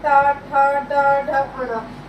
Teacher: टा वर्ग में कौन से वर्ण आते हैं, टा ठा डा ढ अणा। जब इन वर्णों का आप उच्चारण करेंगे तो आपकी जो जीभ है फोल्ड होके मुंह के पीछे वाले हिस्से से टकराएगी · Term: मूर्धन्य